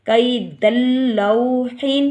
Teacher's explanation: ادغام بلا غنہ ادا ہوگا کہ یعنی کہ دال کو ہم لام کے ساتھ ملا کر پڑھیں گے